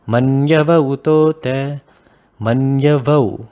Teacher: See, when we go at a pace, sometimes this gets pronounced as Manyava Utota, Manyavau, right? If you go quite fast, you realize that you change the pronunciation to Vau. So that is why that is what I believe at least, we leave a gap so that the pronunciation is made clear and it is preserved.